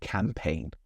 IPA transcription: kæmˈpeɪn